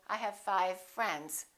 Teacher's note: we would blend them together and say I have five friends the only difference between the V and the F is that V is voiced and F is voiceless otherwise the lips are doing exactly the same thing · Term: same point of articulation